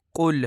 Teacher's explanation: سب سے پہلے لفظ قل کو کل پڑھا جاتا ہے، جو کہ درست نہیں ہے، اور درست ادائیگی قل ہے، قاف کو موٹا کر کے